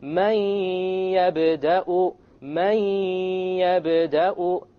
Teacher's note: Notice there is no man. It's immediately the mim associates with the ya, and you drop the noon sound. But you have a ghunnah, and that's the nasal sound.